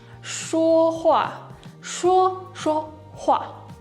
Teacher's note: the second verb becomes a neutral tone. 说话，说话。 Yeah, so the main verb takes the emphasis, takes the tone.